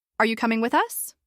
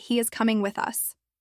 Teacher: You can see how your eyebrows lift. Your voice rises at the end